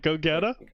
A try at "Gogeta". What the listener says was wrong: It's Gogeta, but you're pronouncing it like a Suthner slurring go-getter.